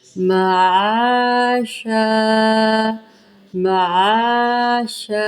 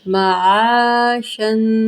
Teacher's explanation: غنہ کیا میں نے تنوین پر۔ اب وقف کی صورت میں دو زبر کی بجائے ایک زبر رہ جائے گا تو یہ شا بن جائے گا